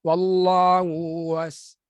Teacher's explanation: Bila sama saja suara tu, ha pertama, ha kedua sama, dia akan jadi bercampur. Itu yang kita namakan idgham.